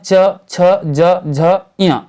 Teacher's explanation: च वर्ग के अंतर्गत आते हैं च, छ, ज, झ, इया, जिसको तालव्य व्यंजन कहा जाता है